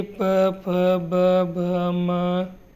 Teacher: इनका उच्चारण करने में आपके दोनों होठों के अलावा और न जीवा का कोई उपयोग था न किसी और कारक का। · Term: ओष्ठ